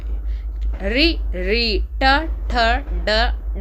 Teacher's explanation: आपकी जीभ उल्टी हो रही है, यानी कि ऊपर की तरफ टकरा रही है, यानी कि आपके मुख भाग में जो ऊपरी भाग है उससे टकरा रही है। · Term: मूर्धा